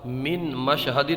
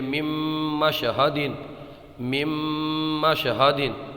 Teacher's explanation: من مشہدین، مت پڑھیے اس کو، پڑھیے مم مشہدین، مم مشہدین گننے کے ساتھ میں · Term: ادغام